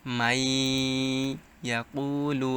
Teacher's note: সো নুন সাকিন অথবা তানবিনের পর যদি ঈদগামে বা গুন্নাহর হরফ আসে, এটা হচ্ছে কি নুন সাকিন। নুন সাকিনের পর ঈদগামে বা গুন্নাহর হরফ ইয়া আসছে, তাই এখানে গুন্নাহর সাথে মিলিয়ে পড়তে হবে।